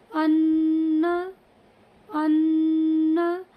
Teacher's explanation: یعنی اور غنہ اسے کہتے ہیں ایک الف کے برابر اس مطلب حرف کی آواز کو ناک میں لے جانا، جیسے ان ان، تھوڑی سی نون کی آواز کو ایک الف کی مقدار کے برابر ناک میں لے گئے، اسی کو غنہ کہتے ہیں